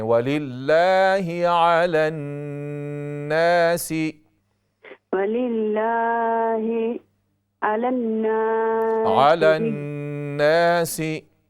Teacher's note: نون مشدد ہے، اس میں غنہ کریں